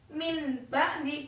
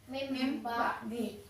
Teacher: Bacaannya bukan min ba'di, bukan, tapi berubah jadi huruf mim. Jadinya mim ba'di. · Nah, maksudnya membalik itu apa? Apabila ada nun sukun atau tanwin bertemu dengan huruf ba, maka nun sukun atau tanwinnya itu bacaannya itu berubah menjadi mim. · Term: Iqlab